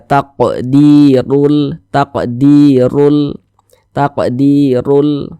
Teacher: Dalam kata "rul", jika huruf ro memiliki vokal dammah—ini disebut dammah atau tanda dammah—huruf ro dibaca tebal, dibaca tafkhim, sehingga bagian belakang lidah kita terangkat ke atas saat kita mengucapkannya. Kentalkan bunyi 'r': "taqdirul", "taqdirul", "taqdirul".